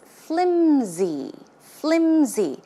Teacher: It's not pronounced with an S sound, but it's closer to a Z sound.